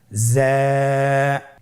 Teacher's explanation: যা হরফটির মাখরাজ আপনারা দেখতে পাচ্ছেন জিহ্বার আগা সামনের নিচের 2 দাঁতের পেট ও আগার সঙ্গে লাগিয়ে উচ্চারিত হয়।